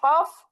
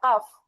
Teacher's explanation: জিহ্বার গোড়া থেকে উচ্চারিত হয় কফ, পরে একটু আগে বাড়িয়ে হয় কাফ